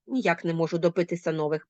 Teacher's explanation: вона ще вимовляється з підвищеною інтонацією